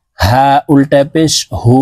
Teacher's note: উল্টা পেশের উচ্চারণ ঠোঁট গোল করে উপরের দিকে ধাবিত করে উচ্চারণ করতে হবে